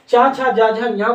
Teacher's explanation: च छ ज झ ञ को बोलते हैं किससे बेटा तालू से